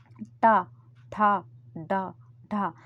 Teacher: जीभ का सबसे बाहरी हिस्सा ऊपर जाकर तारू में अगर टच होता है तो वह मूर्धन्य कहलाते हैं। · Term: मूर्धन्य वर्ण